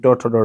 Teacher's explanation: ये जो ये ट ठ ड है यह आपका मूर्धन्य हो जाएगा